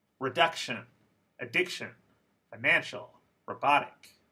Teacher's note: the second syllable in all of these words had word stress